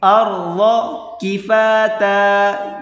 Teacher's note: را کو موٹا کر کے پڑھیں گے اور ضاد کو بھی